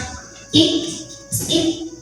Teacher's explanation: itu angin jadi setelah ik ik ya tidak hanya sampai Ik tidak hanya tertahan suaranya enggak hanya syidah tapi ada angin yang keluar setelahnya